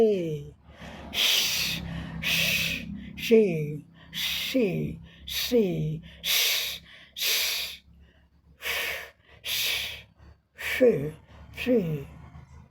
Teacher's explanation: इसमें हमारे थ्रोट यानी गले में हमारे स्वर तंत्र में कंपन नहीं होता है